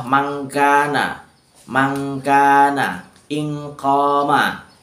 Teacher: Nah, kalau untuk abad itu karena dia jauh, dalam artian makhrajnya tanwin atau makhrajnya nun mati itu jauh dari huruf ikhfa abadnya, makanya perbandingannya antara N dan eng itu condong ke eng.